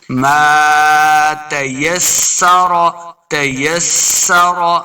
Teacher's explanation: سین کے اوپر سیٹی کی آواز آئے گی، لمع نہیں کریں گے، را کے اوپر پڑھنا ہے.